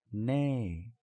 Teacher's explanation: instead of a high tone it's a falling tone